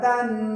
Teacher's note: دال دو زبر دن۔ یہ جو دن کے بعد میں نے آواز کو ناک میں چھپایا، اس کو کہتے ہیں غنہ